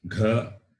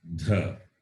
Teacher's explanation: Both are Mahaprana, fourth letter. But one is guttural, other one is dental.